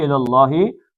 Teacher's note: لام اللہ کا موٹا پڑھنا پیچھے زبر